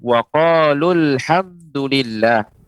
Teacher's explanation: Wa qalu. Ketika dibaca bersambung, maka qalu dibaca pendek. Jadi wa qalul hamdulillah, seolah huruf matnya tidak ada. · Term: wasal